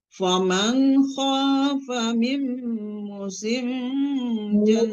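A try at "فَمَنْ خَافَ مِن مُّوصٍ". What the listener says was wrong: Panjang Bu, hati-hati ya. Faman khafa min musin, panjangkan mu.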